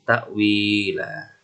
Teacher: Maka cara bacanya adalah harokat fathah tanwin berubah menjadi fathah biasa dan dibaca panjang selama 2 harokat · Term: mat iwad